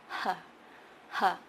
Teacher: It starts with an h, but it's very soft. It's softer than the Vietnamese H. H, h. And then the first vowel sound is uh, uh.